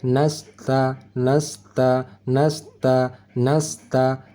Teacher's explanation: Desis angin huruf sin mesti halus, tidak tebal.